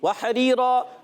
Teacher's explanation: ہا حلق کے درمیان والے حصے سے, را یا زیر ری, یا مدہ ایک الف کھینچنا ہے.